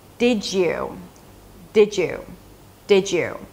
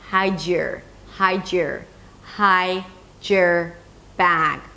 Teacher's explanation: a word ends with a D and the next word begins with a Y, then we hear a J sound